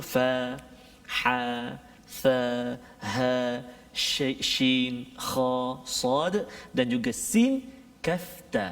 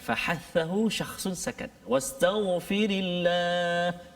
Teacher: bila kita sebut huruf-huruf ini dia terlepas nafas kita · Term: sifat hamas